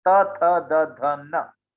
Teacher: जब आपके जीभ आपके दांत को छूते हैं, स्पर्श करते हैं, तब निकलता है त, थ, द, ध, न, ये दंत से है।